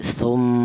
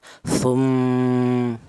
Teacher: Jadi mimnya ini berdengung. Adapun panjangnya dengung yaitu dua ketukan atau dua harakat ya. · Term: gunah, hunnah